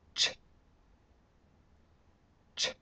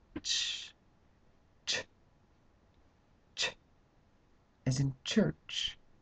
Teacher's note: where's the tip of the tongue it's the same place where it was for the T but then instead of making the T we make the sh